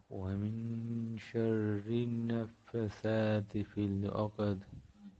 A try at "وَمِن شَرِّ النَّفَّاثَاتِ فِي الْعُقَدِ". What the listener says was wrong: এখানে নাফাসা টান আছে নাফাসাতি ফিল উকদ